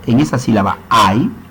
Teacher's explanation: al ser pronunciada la palabra ahijado en esa sílaba ay, nada más suena la A con la I. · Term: diptongo